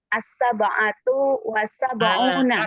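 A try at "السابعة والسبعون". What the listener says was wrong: Asabiatu ya. Asabiatu bukan asabatu. Ini kan asabiatu ya. Nah, asabiatu wasabuna.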